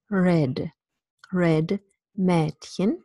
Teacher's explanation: It's a half open front vowel